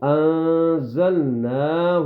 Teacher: ہے اس نون پر اخفا ہوگا اخفا کا کیا مطلب ہے نون کی آواز کو ہلکا سا ناک میں چھپائیں گے